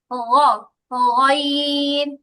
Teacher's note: গইনের উচ্চারণটা আরেকটু গলা থেকে আসবে